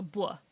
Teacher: There's also off glides are another interesting feature of Irish. Uh, yeah, velar off glide is labialized, so it's basically a W after, so like a blah.